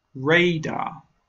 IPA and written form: ˈreɪ.dɑːr (Radar)